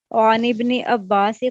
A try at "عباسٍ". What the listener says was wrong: عباسین، تنوین آئے گی عباسین.